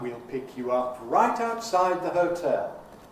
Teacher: We'll, again, the weak form of we with the compromised vowel. You, weak form of you with the compromised vowel.